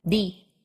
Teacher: Ridge that Ridge right behind your front upper teeth D but in Spanish the tip of your tongue flattens out a bit so that the tip of your tongue actually touches your upper teeth and the blade of your tongue that part right behind the